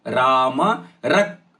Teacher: ರ ಮೇಲೆ ಅಘಾತ ಯಾಕಂದ್ರೆ ಮುಂದಿನ ಪದ ಕ್ಷ